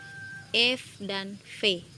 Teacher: bunyi yang diucapkan menggunakan bibir bagian bawah dan ujung pada gigi atas yang saling bersentuhan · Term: bunyi labiodental